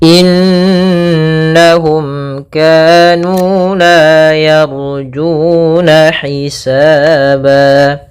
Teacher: mim bertemu dengan Kaf ini kita namakan dengan izhar syafawi yaitu suara mimnya harus dengan jelas tidak boleh ditahan